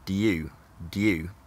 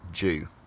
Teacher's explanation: But over the last 60 years or so, the y has assimilated to the d in front of it and become j, which is a post-alveolar sound that's closer to d